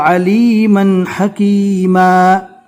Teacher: دو زبر رکنے کی حالت میں الف مدہ بن جائے گا